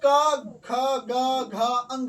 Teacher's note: क का जो जितना भी वर्ण होगा कंठ से उच्चारण होता है